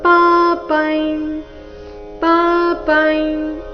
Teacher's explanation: ಅನುಸ್ವಾರದ ಉಚ್ಚಾರಣೆ ಚ ವರ್ಗದ ಅನುನಾಸಿಕ